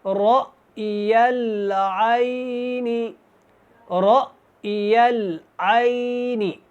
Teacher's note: یہ جو الف کی شکل والا حمزہ ہے جب ہم نے اس کو پڑھنا ہے تو یہاں پہ جھٹکا ہوگا ، را اور یہ یا اسلام کے ساتھ ملے گا، رأی